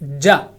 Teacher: اسی طرح شا، یا بولیں گے تو آپ کو محسوس ہوگا، خود بھی اندازہ ہوگا کہ زبان کا درمیان والا حصہ اور تالو کا درمیان والا حصہ ادا کیا جا رہا ہے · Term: حروف شجریہ